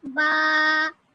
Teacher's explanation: با دونوں ہونٹوں کا تر حصہ ملانے سے با ادا ہوتا ہے